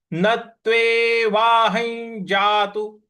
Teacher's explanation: ह के ऊपर जो अनुस्वार है उसका उच्चारण ञ ले आना है · न के बाद जो आधा त है इस पर हमको आघात देना है